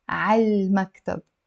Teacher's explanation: So of course I'm doing a liaison. I'm not saying ع and then pausing and then المكتب. No, pronounce it على المكتب, to the office.